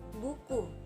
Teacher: Yang keenam bunyi U. Ciri-cirinya tinggi, belakang, bulat. Contoh katanya buku.